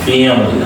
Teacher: I is a reduced sound here. It's a schwa, okay? Because the first A is a stretched, okay?